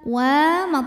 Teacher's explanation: karena ada Alif sebelumnya baris fathah maka huruf wau kita panjangkan dua harakat